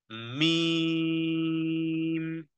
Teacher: জি, মিম, মিম উচ্চারণ হবে, হ্যাঁ, দুই ঠোঁটের, দুই ঠোঁট, দুই ঠোঁটের জায়গা একত্রিত করে, বা দুই ঠোঁটের শুকনো শুকনো মিলিয়ে বলতে হবে মিম